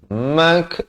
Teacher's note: Minhum mak, baru masuk mak, mim beri fathah, terus nak letak kaf yang bertanda mati, ada bunyi hamasnya